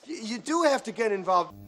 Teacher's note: the do is usually stressed because it is there to begin with to stress the verb